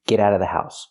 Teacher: you don't have to pronounce the Vv sound in of because it's before a consonant.